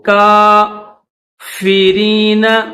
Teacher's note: کا تھوڑا سا کھینچیں گے کاف کو